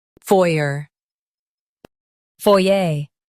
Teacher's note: In UK, stress foy and say ay softly.